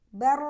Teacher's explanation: untuk ro sukun sama seperti lam dan Nun dialirkan sedikit suara bar bar ya gak boleh bar atau bar tapi alirkan suara